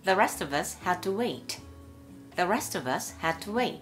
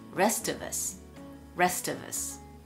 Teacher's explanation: ST▁は無声音同士で仲良しです。仲良しは音が変わらないと覚えてください。